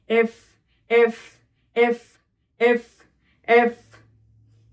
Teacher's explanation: উপরের পাটির দাঁত নিচের ঠোঁটের নরম অংশে লাগিয়ে আটকানোর চেষ্টা করবে, তাহলে এফ উচ্চারিত হবে।